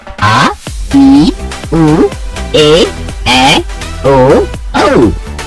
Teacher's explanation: दीर्घ स्वर, इनके उच्चारण में ह्रस्व स्वरों से दुगना समय लगता है। ये संख्या में 7 होते हैं: आ, ई, उ, ए, ओ, औ।